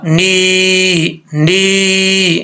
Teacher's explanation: یہ یا مدہ ہے، نون زیر یا، نی، نی، اس کو لمبا کرنا ہے۔ ایک الف کی مقدار آپ کو میں نے پہلے بھی بتایا کہ ایک الف کی مقدار کتنا ہوتی ہے۔